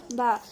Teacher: دونوں ہونٹوں کے گیلے حصے سے با ادا ہوتا ہے۔ با پر زبر ہے، نہیں کھینچیں گے۔